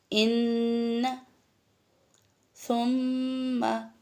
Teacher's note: अपनी आवाज़ को थोड़ी देर नाक में ठहराकर गुनगुनी आवाज़ में हर्फ को पढ़ना, ये आपका गुन्ना कहलाता है। गुन्ना, ये जब मैं आगे आपको सिफ़ात करवाऊँगी उसमें आपको इसको और डिफ़ाइन कर दूँगी, लेकिन अभी खैशूम का जो इस्तेमाल है वो कैसे है, वो है आपका नून और मीम जब शत आ जाए तो इसको थोड़ी देर नाक में आवाज़ ठहरानी है। · हल्की सी बजिंग साउंड आएगी। गुनगुनी आवाज़ जो होती है उसको गुन्ना करना कहते हैं।